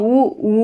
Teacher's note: மெய்யெழுத்துக்கள் சொன்னாங்களோ அதே மாதிரி சார்பெழுத்துக்களுக்கும் வந்து அது பிறக்கும் இடங்களை வந்து குறிப்பிட்டிருக்காங்க இதழ்களை வந்து குவிப்பதால் பிறக்கும் எழுத்துக்கள் நம்ம உயிரெழுத்துக்கள் பார்த்திருக்கோம் உ ஊ அப்படின்னா வந்து நம்ம இதழ்களை குவிப்பதால்தான் வந்து